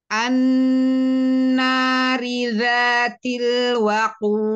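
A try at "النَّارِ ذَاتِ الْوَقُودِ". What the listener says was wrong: Jangan jangan jangan dipelanin itu, Ibu, ketika kol-kolahnya. An-nari dzatil waqud. Jad waqud. Enggak gitu. An-nari dzatil waqud. Langsung.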